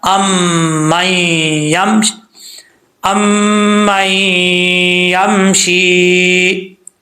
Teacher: میم کے اوپر شد غنہ کریں گے, میم کے بعد نون ساکن آ رہا ہے, اس نون کو پڑھیں گے نہیں. ایسا نہیں ہوگا کہ پڑھیں گے ام من یمشی, ایسا نہیں کرنا.